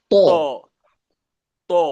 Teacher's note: জিহ্বার আগে উপরে দুই দাঁতের গোড়ার সাথে লাগিয়ে